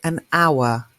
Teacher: an hour begins with h but the H is silent